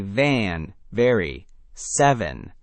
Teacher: For V, your top teeth gently touch your bottom lip, and you push air and voice through that light contact. You should feel a slight buzzing vibration on your lip.